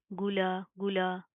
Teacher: गईन के अंदर आपने गाफ की साउंड पैदा नहीं करनी